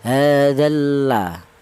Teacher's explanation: Jadi harokat dal ini, jadi lam matinya hilang, langsung masuk ke huruf lam, hadzalla. Kemudian di sini ada ro yang berharokat dhammah, tadi sudah kita bahas ya. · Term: idgham samsiyah